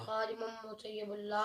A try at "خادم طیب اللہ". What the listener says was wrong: مطیب اللہ نہیں ہے میم نہیں طیب اللہ